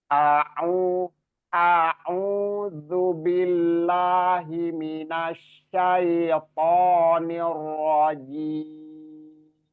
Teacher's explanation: zu-nya juga bukan zai tapi zal, zal ya, huruf ujung-ujung lidah bertemu dengan ujung gigi seri atas